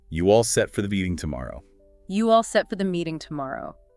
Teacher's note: And the rising intonation at the end signals it's a question.